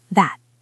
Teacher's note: Notice the t at the end of that is a stop sound.